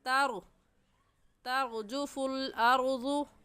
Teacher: یوم ترجفو، ترجفو میں را ساکن آ گیا ہے اور را ساکن سے پہلے والا لفظ تا ہے جس کے اوپر زبر ہے، تو اس را ساکن کو پر یعنی موٹا کر کے پڑھیں گے، اور موٹا کرنے کا طریقہ کہ آپ کے دونوں ہونٹ گول ہو جائے